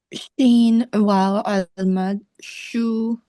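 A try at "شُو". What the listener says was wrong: A little bit longer. Shu.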